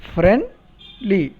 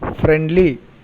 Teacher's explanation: We take a small pause after friend and then the second syllable li is produced.